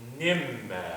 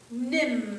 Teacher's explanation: we put a gentle stop of the lip on the first M, and then we propel air. We do a little puff of air on that second one, right?